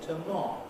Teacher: tomorrow is stressed on the 2nd syllable, hence when I say tomorrow as a complete utterance, the 1st syllable of tomorrow is the prehead.